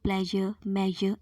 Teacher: front part of tongue is raised towards the hard palate and vocal cords are loosely together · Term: palato-alveolar voiced fricative